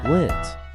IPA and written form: ɡlɪnt (glint)